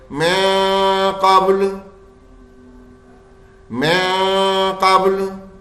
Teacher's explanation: ہمیں نون کی آواز کو چھپانا ہے، غنہ خالی کرنا ہے